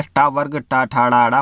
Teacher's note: जब हम मुख के भीतर की छत को अगले भाग से उच्चारण करते हैं उसे मूर्धन्य ध्वनियाँ कहते हैं